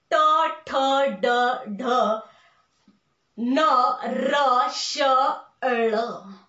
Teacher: मग आता कोमल टाळू आणि कठोर टाळू यांच्या मधोमध भागाला म्हणतात मृधा. आणि आपल्या जिभेचं टोक ज्या वेळेस मृधेला स्पर्श करतं आणि तेव्हा ज्या वर्णांचा उच्चार होतो त्या वर्णांना म्हणतात मूर्धन्य वर्ण.